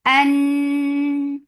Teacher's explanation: For fatha open jaws attach with noon. Noon will get sifa of gunna. And this gunna is akmal. So keep the sound in your nose for a longer time. An. And then for fatha the sound is short.